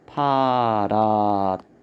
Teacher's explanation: 자, 5번 파라타인데 파라타는 받침의 히읗과 다의 디귿이 합쳐지면 뒤에 디귿이 거센소리 티읕으로 줄어듭니다. 그래서 발음을 하면 파라타 이렇게 발음이 됩니다. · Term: 음운 축약